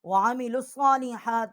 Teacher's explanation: لام کو صاد کے ساتھ جو ہے وہ ہم نے اس کو مشدد کیا ہے